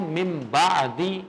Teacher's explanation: اقلاب تو لگ گیا، غنہ نہیں میں نے کیا